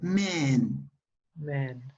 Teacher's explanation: No es man ni es men. Es una mezcla entre A y E.